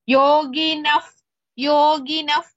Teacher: that ವಿಸರ್ಗ we have to pronounce it completely because it is before the letter ಕ್ಷ next words first letter is ಕ್ಷ so the ವಿಸರ್ಗ will be